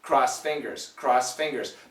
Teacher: Two reasons we can cancel the ED, the sound, because of the S, which is a strong sound, and the F, which is also in the S family.